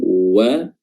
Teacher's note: Dimulai dengan huruf waw, ya, di mana huruf waw ini betul-betul bibir ini dimonyongkan wa, dan dia berharokat fathah, ya, fathah terbuka, ya, artinya bibir dibuka ke atas dan juga ke samping.